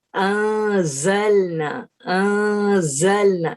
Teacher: اس میں زا جو ہے نا تھوڑی سی بزنگ ساؤنڈ